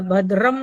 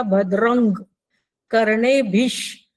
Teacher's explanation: काही लोक म लावतात भद्रम लावतात, पण तसं भद्रम न लावता भद्रंग कर्णेभिष